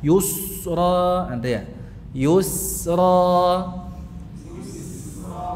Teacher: sampai pada pengucapan sinnya tidak usah mencucuk